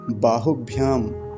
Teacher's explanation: बलम बाहु ब्याम यहां पर ह का पर हरस उकार है छोटा उ है जल्दी ही बोला जाएगा लंबा नहीं खींच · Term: ह्रस्व उकार